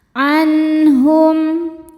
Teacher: An ada hukum izhar halqi sebab ada nun sukun bertemu huruf ha, huruf halqi atau tenggorokan ya. Maka nun sukun dibaca secara jelas.